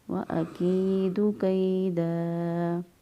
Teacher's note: یا ساکن سے پہلے والا حرف کے نیچے زیر، تو لہذا یا مدہ ہوگا، ایک الف کے برابر لمبا کریں گے